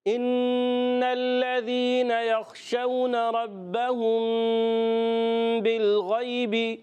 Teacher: جب کبھی میم ساکن کے بعد با آئے اخفاء شفی کا غنہ